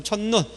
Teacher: 첫눈 할 때는 우리가 긴 소리 납니까? 안 납니까? 나지 않죠? 둘째 음절 이하로 보면 자동 짧은 소리 된다고 했으니까요.